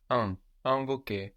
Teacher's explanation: the n on the end of the syllable is getting swallowed into the vowel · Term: nasal I